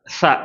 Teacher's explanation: ரொம்ப லைட் ச அப்படின்னு காத்து மட்டும் வரக்கூடியது